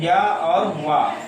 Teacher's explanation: वायु जो है मुख विवर से बाहर निकलती है, सरकती हुई प्रतीत होती है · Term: अर्धस्वर